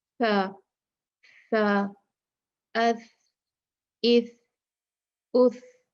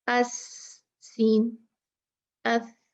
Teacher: وہ کس وجہ سے سافٹ ہے کہ اب ہم نے زبان جو ہے وہ اوپر کے اگلے دانتوں کے کناروں سے ٹچ کی ہے